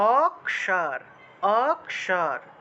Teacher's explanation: এই খিয়টাকে ভেঙে আমাদেরকে ক এবং মূর্ধন্য তে ভেঙে উচ্চারণ করতে হবে